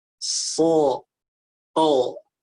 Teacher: Kalau Indonesia itu makan soto, dibulat soto. Nah, kalau huruf sod bukan masalahnya pada rahang, tapi pada lidah yang diangkat di belakang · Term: fathah isti'la